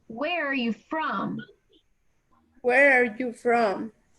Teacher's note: That gets the stress on where and from.